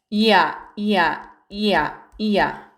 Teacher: 반모음 이와 단모음 아가 결합한 모음이에요. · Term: 이중모음 야